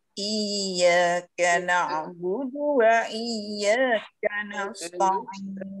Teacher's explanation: Iyyaka na'budu wa iyyaka nasta'in. Hati-hati budunya tidak kepanjangan.